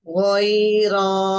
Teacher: Nah, ro berharokat fathah, dibacanya tasfim ya, tebal. Ghainnya ketika fathah tetap dibuka, tidak dengan memonyongkan kedua bibir ya. Hanya dia ditebalkan.